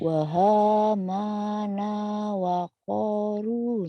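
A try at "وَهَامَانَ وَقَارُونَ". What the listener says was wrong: Salah panjang pendeknya. Hurufnya benar tapi salah. Yang panjang hama sama ko sama ru ayo.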